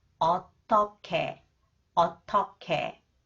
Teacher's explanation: when the consonant 기역 comes after the final consonant 히읗, it combined with 히읗 and it is pronounced 크. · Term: aspirated consonants